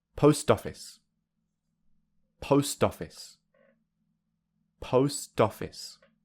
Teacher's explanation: Post office, post office, post office. You can hear that the t is very weak. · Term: linking